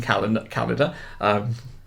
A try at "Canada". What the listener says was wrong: You just said it like calendar.